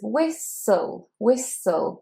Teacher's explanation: And the T, you can't really hear the T. We don't say whistle.